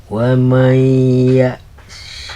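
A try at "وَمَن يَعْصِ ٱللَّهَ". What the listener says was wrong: ya'sillaha bukan lahi.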